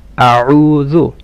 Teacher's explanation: The عين should be from mid of the throat. أعوذ. And the ذال should be soft.